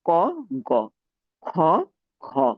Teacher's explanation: খ উচ্চারণের সময় আবার বাতাসটাও বেশি বের হচ্ছে। সে তুলনায় ক উচ্চারণে বাতাসটা কম বের হচ্ছে এবং একই সাথে তাপটাও কম পড়ছে। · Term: মহাপ্রাণ